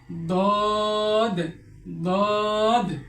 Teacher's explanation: জিহ্বার গোড়ার কিনারা উপরের মাড়ির দাঁতের গোড়ার সঙ্গে লাগিয়ে দদ উচ্চারিত হয়। আমাদের যে জিহ্বা রয়েছে এই জিহ্বার গোড়ার ডান অথবা বাম কিনারা, এই কিনারা উপরে যে দাঁত রয়েছে, উপরের মাড়ির যে দাঁত রয়েছে এই দাঁতের গোড়ার সঙ্গে লাগিয়ে দদ উচ্চারণ করতে হয়।